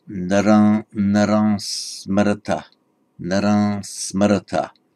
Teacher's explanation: tends to be pronounced just like a nasal, a bit like the French or the modern Hindi nasal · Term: Anuswara